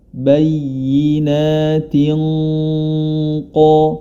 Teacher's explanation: huruf ta yang berharakat kasrah Tani bertemu dengan huruf qof ya maka di sini dia gunahnya menjadi tebal Mengapa menjadi tebal karena huruf qf adalah huruf istila huruf yang